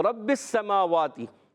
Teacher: با مشدد ہے، ذرا رک کر ادا کریں گے، اور با کو پھر سین سے ملائیں گے، سین کو بھی ذرا رک کر ادا کریں گے